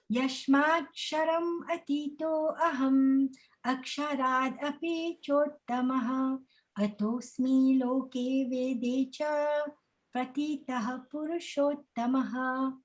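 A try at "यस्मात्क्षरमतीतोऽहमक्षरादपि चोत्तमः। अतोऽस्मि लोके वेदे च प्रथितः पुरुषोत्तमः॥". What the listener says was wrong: Very nice, Mother. Beautiful.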